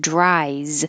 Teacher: and it sounds like an s but in the word dries the s looks like an s but sounds like a z because the last sound in the word dry is a vowel i and all vowels are voiced